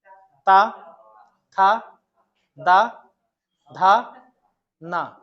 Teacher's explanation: अब जीभ जो है वह दांत पर टकराएगी। मुर्धा और तालू छोड़ के सीधे दांत पे जाकर टकराएगी। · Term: दंत वर्ग